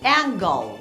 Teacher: angle onde a sílaba final termina num som de L apesar da última letra ser um e